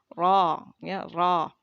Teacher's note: huruf ro kalau misalnya fathah itu tebal ya, terangkat lidah bagian belakang. Ro ya, ro. Jadi kalau berharokat ro, ri, ru gitu ya.